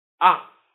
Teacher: Ah, ah. With the fourth tone, which is also called the falling tone.